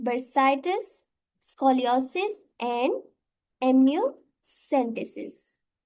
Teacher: the stress is basically placed on the first vowel in the suffix